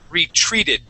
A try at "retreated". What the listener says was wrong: give me a good R sound.